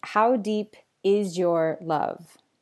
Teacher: So in English in connected speech sometimes a final Z sound in a word and an initial Y sound in the following word combine to make a sound at the boundary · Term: coalescence